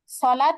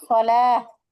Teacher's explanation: গোলতায় অক্ষ করিলে তা আর তা থাকে না, কি হয়ে যায়, ছোট হা। গোলতায় থেমে গেলে বা অক্ষ করিলে ওই তা আর তা থাকে না, কি হয়ে যায়, হা হয়ে যায়।